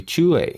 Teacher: that's a falling tone. You have to put that falling tone on there or else they will not understand what you say.